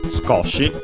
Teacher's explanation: Skoshi, yes, accented on the ko